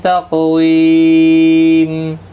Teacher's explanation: تق قاف پر قلقلہ ہوگا، پر بھی پڑھا جائے گا، حروف مستعلیہ ہے